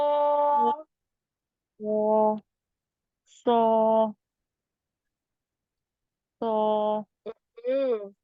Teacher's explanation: Huruf sod sifatnya dia punya sifat isti'la dan itbaq. Maka dia tebal dan terkepung.